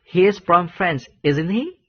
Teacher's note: karena kita tidak yakin tadi, kita mengucapkan question tag-nya dengan nada yang naik